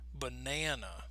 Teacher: it's the second syllable that is going to have the clearer stressed sound because that is the stressed syllable so that's going to sound very clear so in this case